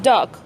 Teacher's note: An example that illustrates the articulation of the vowels can be perceived in dog. The vowel in dog is an open back vowel.